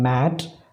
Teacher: There is an oral closure made by some active articulator making a firm contact with the corresponding passive articulator, but the soft palate is lowered and it comes away from the back wall of the pharynx, thus opening the nasal passage of air. The air from the lungs escapes freely through the nostrils. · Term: nasals